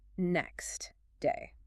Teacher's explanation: You hear a clear, strong T at the end of next.